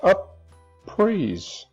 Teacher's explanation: up praise you feel a pretty strong P right here so the P is kind of connected to the coda of the first syllable and to the onset of the second syllable